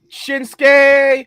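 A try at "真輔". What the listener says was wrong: I'm sorry, did you roll your R's like a Spanish person? Like a Latino?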